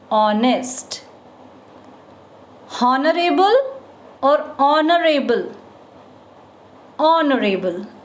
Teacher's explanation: Though they are starting with H, but first sound is O. H is silent.